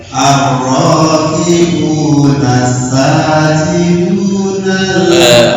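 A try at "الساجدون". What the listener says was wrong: Belum, masih tertahan. Sin itu masuk huruf hamas, mahmusuhu fahatahu syahsun sakat. Artinya lepas, jangan ditahan. Bukan jahar, ya. Ya, assa ar-raki'una ar-raki'una sajidun.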